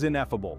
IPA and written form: inˈefəb(ə)l (ineffable)